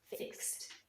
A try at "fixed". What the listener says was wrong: te has quedado corto con la terminación. Porque si no lo pronuncias como una T